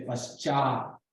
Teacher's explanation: That's a palatal sh because it's followed by a ch that is palatal.